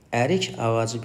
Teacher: ərik ağacındakı K samiti də Y kimi tələffüz olunur.